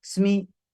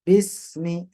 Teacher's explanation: Sin ketika mati matikanlah dengan ketukan satu ketukan. Mi satu harokat.